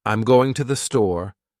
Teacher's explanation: try saying, I'm going to the store, with stress on going and store